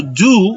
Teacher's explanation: Fíjense que estoy diciendo do, una U larga